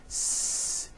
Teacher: No, the S sound is unvoiced.